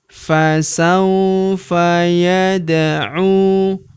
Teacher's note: huruf da berharakat sukun kita pantulkan atau kita qalqalahkan. Yadu huruf u kita panjangkan dua harakat karena terdapat wau sukun di depannya.